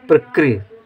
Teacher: ऋ की मात्रा की विशेषता यह होती है कि र के साथ हल्का सा ई का उच्चारण होना चाहिए